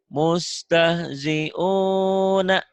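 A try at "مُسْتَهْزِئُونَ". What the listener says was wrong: Bukan ain ya, ini bukan ain, ini hamzah.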